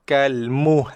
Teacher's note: Lidah kita naik ke ataupun tekan pada langit depan ataupun gusi atas, gigi atas tu Kalmuhl. Tekan dan bunyikan l tanpa melepaskan tekanan lidah pada gusi.